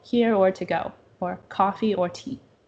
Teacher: if we're doing an exclusive, the tone falls